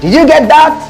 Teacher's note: when I say did you get that that is a question it's a rising tone